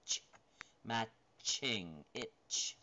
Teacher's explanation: It's alveolar, it's palatal, it's right in that area, and there's no voice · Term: ch sound